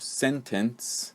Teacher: in the second syllable of sentence the schwa sound is used